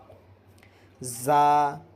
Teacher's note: نوک زبان اوپر نیچے کے دانتوں سے مل کر زا ادا ہوتا ہے۔